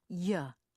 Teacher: if your tongue tip touches you will say JA rather than yeah do not let your tongue tip touch the roof of your